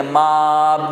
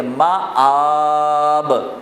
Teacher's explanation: تو یوں پڑھیں گے کہ پہلے حرف کو الگ زبر کے ساتھ اور کھڑا زبر کو کھینچ کے